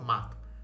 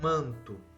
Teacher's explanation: Mato, o som sai pelo nariz? Não, o som é oral.